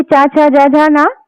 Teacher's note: जबकि च वर्ग यानी कि च, छ, ज, झ, न। इसका जो उच्चारण स्थान है वो है तालु से।